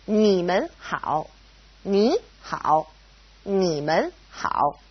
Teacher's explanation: It's a toneless tone, or a neutral tone, mun. Now, because we have mun separating ni and hao, they both go back to being third tone.